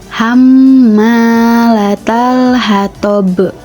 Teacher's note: Karena huruf baut berada pada akhir ayat dan berharakat sukun, maka huruf baut termasuk ke dalam hukum bacaan qalqalah. Dan membaca huruf ba tersebut harus disertai dengan adanya pantulan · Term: qalqalah kubra